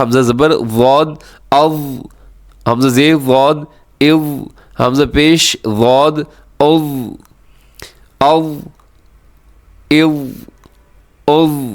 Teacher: زبان کی جو کروٹ ہے وہ آخری جو اوپر کی 4 داڑیں ہیں اس کے اوپر بچھ جاتی ہے, اس سے یہ حرف ادا ہوتا ہے.